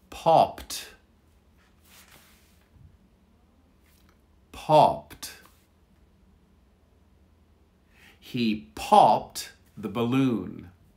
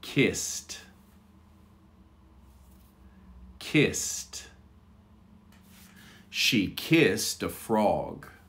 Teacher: an ed that sounds like a t